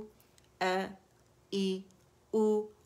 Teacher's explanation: अ ई उ, अक़सुल हल्क से अदा हो रहा है